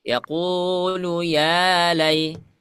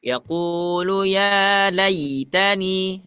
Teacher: Nah, ini ketika ada fathah setelahnya ada ya sukun, ini hukumnya adalah lin, ya, jadi tidak ditarik, ya, tidak tidak dihentakkan